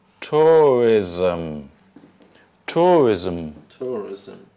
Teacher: And here we have an extra syllable which is not written. Between the S and the M, we put in an extra schwa.